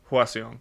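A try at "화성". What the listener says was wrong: Just a little bit faster. Hwaseong.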